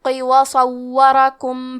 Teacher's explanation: کلمت صورکم میں واو پہ تشدید ہے، لہذا ہمیں 2 حرف کے برابر واو کو پڑھنا ہے، را پہ زبر ہے اور کاف پہ پیش ہے، تو ہم یہ دونوں حرکات کو ظاہر کریں گے۔